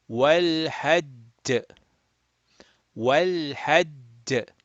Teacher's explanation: we will make a qalqala, but we will make it strongest